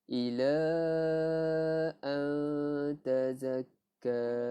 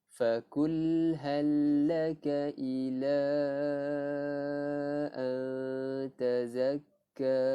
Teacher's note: Tapi bila mana nun mati bertemu ta ikhfa hakiki, kita bacanya dengung.